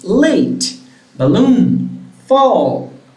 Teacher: the tip or the blade of your tongue touching the alveolar ridge, and air escapes through the lateral part of your mouth. You can't see it here, but you can feel it in your vocal tract. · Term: lateral phonemes